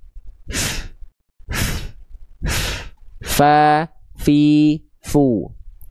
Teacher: Bibir bawah bagian dalam kita yang basahnya itu nyamperin ke ujung gigi dari atas. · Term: huruf fa